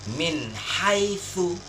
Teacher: maka cara membacanya ialah jelas, tak boleh berdengung. Contohnya yang pertama misalnya huruf nun sukun atau nun mati bertemu dengan huruf ha kecil, maka yang benar bacaannya contohnya ialah min haitsu. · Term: izhar